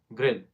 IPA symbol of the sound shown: ɪ